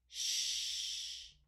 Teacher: The sound is long, shh, and I feel my tongue laying in the middle of my mouth. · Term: sh sound